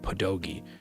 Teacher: Um I think the American population of the Polish people when they moved to the United States just dropped the rolled R and pronounced the rolled R as a D and it became pedogi.